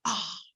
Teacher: the H at the end is expressing the breath.